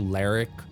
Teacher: It would be something close to Ler'k. Like there'd be a little bit of an I sound in between the R and the K. Very phonetically difficult now that she is working with half a tongue.